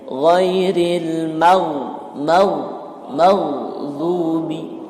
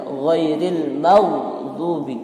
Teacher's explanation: Kalau kita sukunkan, dia seperti ada tafkhim nisbi apabila didahului oleh huruf harokat, huruf fathah.